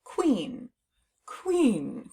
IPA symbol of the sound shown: kw